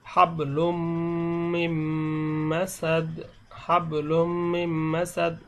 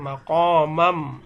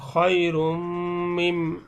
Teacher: তাহলে দেখুন এই যদি এরকম নুনে সাকিনের পরে মিম আসে, তাহলে মিম, ওয়াও, নুন এবং ইয়া, এই চারটি হরফ যদি নুনে সাকিনের পরে আসে অথবা তানবিনের পরে আসে, সেই ক্ষেত্রে এই নুনে সাকিনকে পড়া যাবে না, সামনের হরফটিকে পড়া হবে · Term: গুন্না